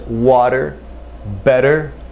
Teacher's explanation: we render the T as a D sound something similar to a Spanish r